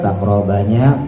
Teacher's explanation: qofnya qalqalah berada di tengah bacaan pantulannya setengah qalqalah sugra